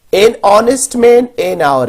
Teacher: इनका beginning sound vowel sound है क्योंकि एच जो है वो प्रोनाउंस्ड नहीं होता, लिहाजा हम इनसे पहले एन का इस्तेमाल करते हैं. · the words our, honest, I begin with a vowel sound as the initial consonant is H which is not pronounced